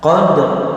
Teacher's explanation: kita harus tampakkan takrir dan tafkhimnya huruf ra, sekaligus kita tampakkan qalqalah daripada huruf dal ya.